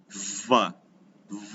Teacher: double V, which means we pronounce the V for a long time.